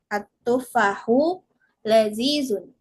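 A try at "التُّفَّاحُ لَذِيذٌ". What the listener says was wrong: Atufahu ada dua tasdid, ulangi. Atufahu ladzidun.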